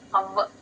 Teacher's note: ఔ ఊ ఔ సౌండ్ రాకూడదు ఆ ప్లస్ వ కి పొల్లు అంతే ఔ అంతే ఔకారం రాకుండా